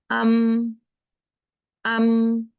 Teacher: इसका जो मीम है उसका जो मखरज है वो शफातान है, वो दो होंठ हैं। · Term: शफवी